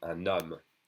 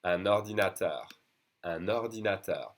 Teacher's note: Usually, remember, un is pronounced un, un, unless it's followed by a vowel sound, which means a vowel or an H, because remember the H is silent and it's usually followed by a vowel. So then I'm going to connect the N to the next vowel with an N sound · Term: liaison